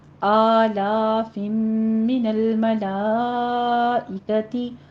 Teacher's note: قاعدہ اخفا شفی کریں گے، یہاں پہ 2 کاؤنٹ کرنا ہے، فا کے اوپر سیٹی کی آواز نہیں آنی چاہیے، نرمی سے پڑھنا ہے